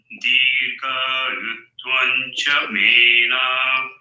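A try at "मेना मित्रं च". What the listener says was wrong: Mena. Na. There's no na. It is hraswa. No dirgham. Mena mitram cha.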